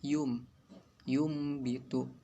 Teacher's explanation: Iklab merupakan hukum bacaan yang terjadi apabila nun mati atau tanwin bertemu dengan huruf ba. Di sini nun mati atau tanwin tidak lagi dibaca huruf nun dan tanwin, melainkan dibaca dengan huruf mim.